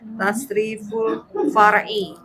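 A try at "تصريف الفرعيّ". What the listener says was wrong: Ini pakai tasdid juga ya. Far'iyyu. Far'iyyu.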